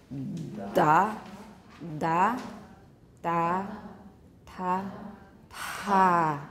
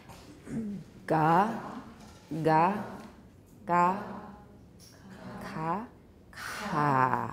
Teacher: long, fully voiced, a little bit shorter, voiceless, unaspirated, slightly aspirated, strongly aspirated